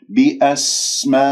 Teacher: سين صفير ويجري فيها النفس والصوت، النفس همس والصوت رخاوة، واجتمع حرف المد والهمزة بكلمة بأسمائهم، فإذا مد واجب متصل.